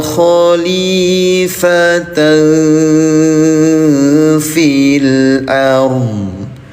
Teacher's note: Cara bacanya samarkan bunyi tanwinnya selama dua ketukan. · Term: ikhfa